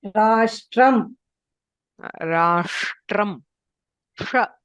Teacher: For the pronunciation of this sh, the tongue should curl backwards